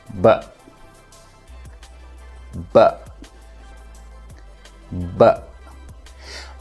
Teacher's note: this is a plosive which means when you produce the sound it feels like a minor explosion out of your mouth how do you produce the sound the air is temporarily trapped